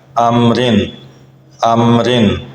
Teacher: را کے نیچے 2 زیریں آ جائیں تب بھی را باریک ادا کیا جائے گا